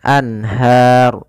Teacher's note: asli dasarnya memang ada tapi kalau ru ini kan asalnya alanharu karena kita wakaf runya dimatikan menjadi ro yang disukunkan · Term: sukun Arid